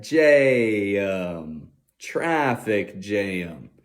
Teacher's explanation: when we have a wide a then we got a nasal sound